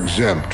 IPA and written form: ɪɡˈzempt (Exempt)